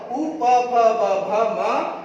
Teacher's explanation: उ प फ ब भ म इनका उच्चारण स्थान होठ